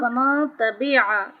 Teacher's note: نون ساکن کے بعد تا آ رہا ہے تو یہاں پہ بھی اخفا ہوگا، یعنی ایک الف برابر غنہ کریں گے.